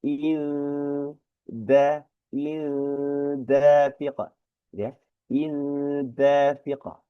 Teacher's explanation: Kemudian mimma dafiq, kasrah tanwin bertemu huruf dal, hukumnya adalah ikhfa ya. Ke arah mau nempel huruf dal tetapi belum nempel, belum terucap sepenuhnya. Jadi ngegantung ke arah huruf dal.